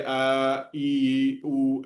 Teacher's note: प्लूत स्वर क्या हो गया, 3 मात्रा का समय लगता है